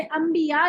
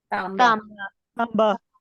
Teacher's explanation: हम अंबिया का लफ्ज उर्दू में बोलते हैं और नून की जगह मीम पढ़ते हैं।